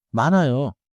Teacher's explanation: In English, don’t force an h sound in 많아요.